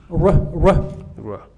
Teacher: English has a r that is close to a l, that is between the r, the French r and the French l. It's between the two.